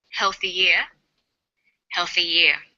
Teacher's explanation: For example, healthy ear sounds the same as healthy ear. When healthy is linked together with ear, a y sound is added. So, healthy ear and healthy year have the same pronunciation, shown phonetically like this: healthy year, healthy year.